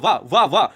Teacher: आप जब व बोलोगे तो दांत ओठं में टच हो रहा। तो दांत ओठ में टच हो रहा। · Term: दंतोष्ठ व्यंजन